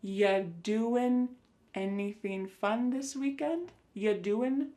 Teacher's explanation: When we say you doing anything fun instead, you're going to hear y doing ya. The word you is reduced to y.